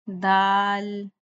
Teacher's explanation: दाल की अदायगी में हमने अब सीटी की आवाज नहीं निकालनी। ज दाल नहीं करना इसका।